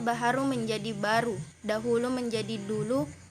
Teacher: proses penghilangan atau penanggalan satu atau lebih fonem pada tengah kata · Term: singkop